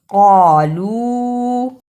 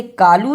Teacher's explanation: پڑھنا، ہا پیش میم ہم، فتنتہم، قالو، اسے کالو نہیں پڑھنا، قاف اور کاف دونوں کی آواز میں فرق ہے، قاف کو موٹا پڑھنا ہے